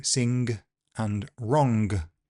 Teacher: in some English accents, particularly in the West Midlands and Manchester, you do hear the g all the time